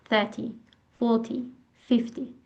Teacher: In 30, the stress is on the first syllable.